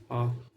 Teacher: पहला लिखिएगा, पहला है विवृत स्वर, जो मुख पूरा खुला वो है आ। विवृत स्वर मुख पूरा खुला आ, जैसे आप बोलिएगा तो ये मुख पूरा खुलता है, इसी को बोलते हैं विवृत स्वर।